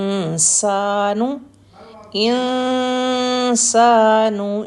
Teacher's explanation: نون کی ساؤنڈ کو ہم چھپائیں گے اور نیکسٹ سین کے لیے ریڈی رہیں گے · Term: اخفا